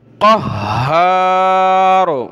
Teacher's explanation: اس ہا کو سختی کے ساتھ پڑھیں گے تشدید کی وجہ سے